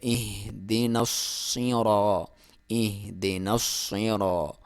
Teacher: ہا اور حمزہ آپ کے حلق کے بالکل آخری حصے سے، یعنی تقریباً سینے سے آپ کی آواز نکلتی ہے